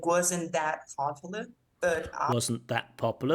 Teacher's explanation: the te is elided it disappears wasn't that popular because it's next to a p don't you